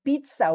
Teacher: When you say pizza, parang it's an aspirated sound of P and H. Medyo strong pag-pronounce. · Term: aspirated P